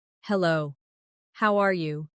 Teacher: Notice how the tone goes slightly up at the end, showing you're asking a question.